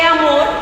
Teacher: amor es aguda por qué porque tiene su fuerza en la última sílaba